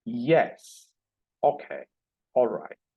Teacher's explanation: the low fall is used to indicate approval, acceptance, consent, etc.